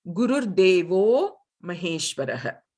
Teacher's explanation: Here, this Devaha becomes, the Visarga becomes an U, and then it becomes an O